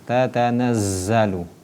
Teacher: Huruf za ini di dalam ilmu tajwid sifatnya shafir. Ketika huruf za itu dibacakan ataupun sukun, maka yang keluar bersiul ataupun berdesis.